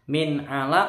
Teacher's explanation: Itu huruf idhar. Min alaq nggak boleh dengung. Alaq qafnya mantul seperti ini.